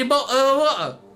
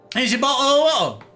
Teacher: We love a glottal stop. A glottal stop. Again, no T's, you guys. Not even a single T.